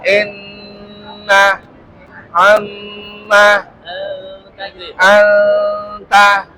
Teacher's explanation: Nah itu bunyi dengungnya itu ada di pangkal hidung. Namanya al-khaizum.